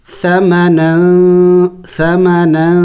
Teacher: میں نے اخفا کیا، یعنی ناک میں آواز لے کے گیا، ناک میں آواز چھپائی میں نے تنوین کی